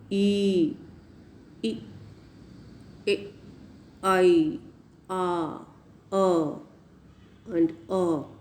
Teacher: is the position of the lips unrounded lips e e e we are not rounding our lips while speaking